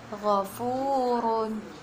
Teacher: ro tafkhim, yang artinya ro yang dibaca tebal